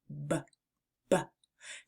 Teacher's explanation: The B sound is a voiced lip popper. It's like a soft pop when your lips come together. B, B. To make the B sound, start by pressing your lips together firmly and then releasing a puff of air while turning on your voice.